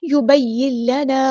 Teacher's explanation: نون ساکن کے بعد لام ہے تو اس کو ادغام ہوگا، مکس اپ کر دیں گے. یبین لنا ادغام کامل ہوگا، ادغام بلا غنہ.